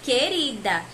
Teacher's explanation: na palavra querida a gente não pronuncia, não ouve o som do U